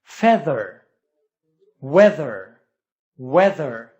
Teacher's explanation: voiced th sound in the middle of the word